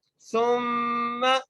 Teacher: سا کو میم سے ملانا ہے اور غنہ کرنا ہے، میم کے اوپر تشدید ہے اس لیے ہم یہاں پر غنہ کریں گے